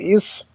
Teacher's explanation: صاد ہے حروف صفیریہ میں سے بھی ہے، اس کو تھوڑا سا سیٹی کی آواز نکالیں گے. پھر حروف مستعلیہ میں سے بھی ہے اور موٹا کر کے بھی پڑھیں گے.